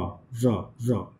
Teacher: Tip of the tongue is the active articulator and the back of the teeth ridge is the passive articulator. · So here tip of the tongue goes towards the teeth ridge and touches it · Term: post alveolar